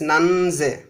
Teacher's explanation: when we have this voiced consonant at the end, then the plural s becomes z, but not s